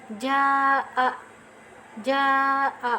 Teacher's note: dia mempunyai makhraj yang keluar dari rongga tenggorokan dan rongga mulut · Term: al-jauf